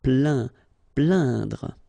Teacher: you will get the sound un. So really, this nasal sound in your nose.